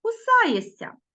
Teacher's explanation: Ми пишемо шся а вимовляємо кусаєся